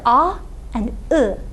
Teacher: The first category of back vowels, our third, is back unrounded vowels. So the two vowels in Turkish that you articulate at the back of your mouth without rounding your lips. These are a and ı.